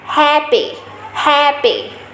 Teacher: Đấy chính là chữ A và mình cách đọc đấy là mình mở miệng chữ A và mình sẽ đọc lên âm e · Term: âm e bè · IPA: /æ/